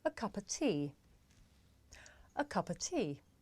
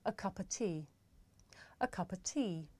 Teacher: the words a and of become schwa